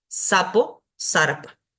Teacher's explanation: tenemos luego la s dental que es como nuestra s